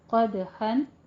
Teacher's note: اس کو الف مدہ سے بدل دیں گے، یعنی وقف ابدال کریں گے۔ قدحن میں قوف کو پر پڑھنا ہے، دال کے اوپر قلقلہ کرنا ہے